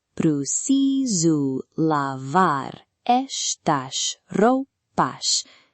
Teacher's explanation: In Portugal, the vowels may be shorter and more compressed.